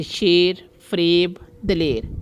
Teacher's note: اس میں یہ کی آواز واضح نہیں ہے تو یہ یائے مجہول ہے